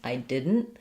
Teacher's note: I might just not release that T